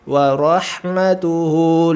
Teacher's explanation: Ro sempurna dulu, ro-nya tebal, ha-nya sempurna tipis